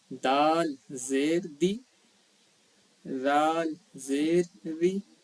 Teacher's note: بالکل باریک زبان کی نوک کو جو سامنے کا جو دونوں دانت ہے اس کے سرے سے یا کنارے سے لگائیں گے جہاں پہ وہ ختم ہو رہا ہے، بالکل وہیں پہ زبان کی نوک کو.